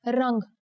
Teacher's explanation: Here the anuswar makes it sound like the ng in the English word song.